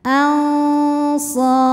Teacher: Ada hukum ikhfa awsat karena nun sukun menghadapi shad, maka nun disamarkan ke shad disertai dengung.